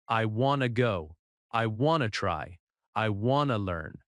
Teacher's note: Notice the stress. The stress is on want or go, not on every word.